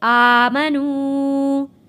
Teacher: میم کے اوپر زبر ہے، یہ نہیں کھینچا جائے گا۔